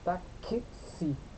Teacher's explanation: Ali o X, ele representa dois sons. Um K e um S. Táxi. Então, T, A, K, S, I. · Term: som de KS